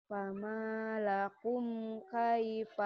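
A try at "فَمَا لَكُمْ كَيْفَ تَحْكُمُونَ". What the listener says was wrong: Lakum, jangan lahum. Lakum, lakum, lakum. Kaknya kayak kedengaran ha. Lakum.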